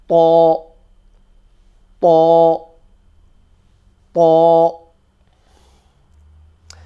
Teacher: we basically take the tip of the tongue and we push it behind these front teeth, behind them where the gums and the teeth meet. And the same thing happens here, but this time it's a full mouth letter.